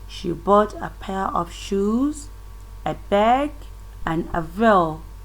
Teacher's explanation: You can see that the tone is rising. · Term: rising tone